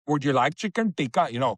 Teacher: Indian people, they always have this retroflex